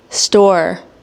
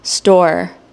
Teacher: Where's my tongue? So my tongue isn't touching the roof of the mouth